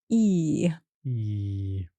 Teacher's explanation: this is a long vowel sound your jaw this bit of your face is not relaxed it's quite tense as if you're smiling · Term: e sound